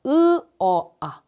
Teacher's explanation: 으 어 아를 발음하면 입술이 점점 크게 벌어지는 걸 느낄 거예요 입이 크게 벌어진다는 건 턱이 같이 낮아지는 거거든요 턱이 낮아질 때